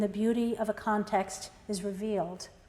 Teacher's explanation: the suggestive luminous word revealed with a stress on the final syllable